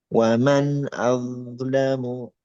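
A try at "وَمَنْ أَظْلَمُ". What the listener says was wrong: masih ya, masih mantul sedikit au lam au ya, cuman nggak di, nggak ada jeda ya. Waman au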